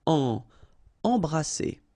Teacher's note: Alright, EM here, and then you've got a consonant after, so you get the nasal en. So you don't hear any M, it's really in your nose.